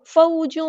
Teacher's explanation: تنوین کی آواز کو یہاں چھپا دیں گے، اخفا ہوگا